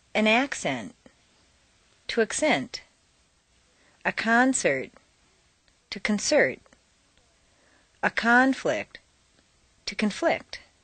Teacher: change the stress from the first syllable for nouns to the second syllable for verbs